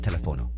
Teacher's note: ends in a vowel but the accent mark tells us to stress the third to last syllable